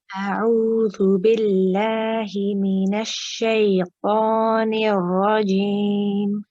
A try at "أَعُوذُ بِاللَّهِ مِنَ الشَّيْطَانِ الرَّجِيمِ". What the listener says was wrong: Okay, when you say mina shay, I want you to sort of let the ya, mina shay, the shaytan, keep the ya just running, and then keep it running, and then go into the ta. Okay, so no gap in between. Mina shaytanir rajim.